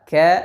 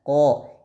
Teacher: Kaf tipis, qaf tebal. Kaf ada anginnya, ada udaranya, qaf tidak ada.